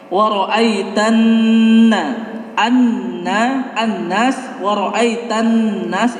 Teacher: Nah, kalau alif lam samsiyah seperti yang disebutkan tadi, ketika ada alif lam diikuti oleh tasydid, otomatis alif lamnya itu dibuang, tidak dibaca.